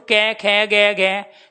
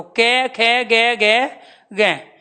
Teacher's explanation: हम गले के अलावा और किसी का इस्तेमाल कर ही नहीं रहे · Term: कंठ